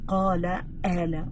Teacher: In some Palestinian dialects, they will flip the qa into an a.